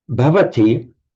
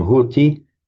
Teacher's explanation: So b softened to a h is a lenition. So bhavati by lenition can become hoti.